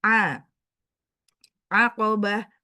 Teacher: ain dari halki pertengahan wasatul halki, tenggorokan bagian tengah,